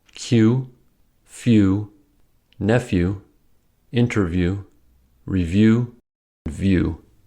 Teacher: Now let's consider the U sound. U is not a phoneme, but a composite vowel sound, as it can be analyzed into y plus oo.